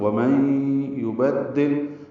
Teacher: ومن یبدل، اب دیکھیں نون ساکن کے بعد یا تشدید آ گئی، ادغام کریں گے مع الغنہ، ومن یبدل، با کو دال سے ملائیں گے، دال کو لام سے ملائیں گے۔ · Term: ادغام مع الغنہ